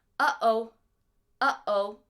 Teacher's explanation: so a glottal stop the only one that I really know of in English is in the word uh-oh